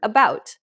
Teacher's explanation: the most common vowel sound in the English language is the schwa which sounds like the a in the word about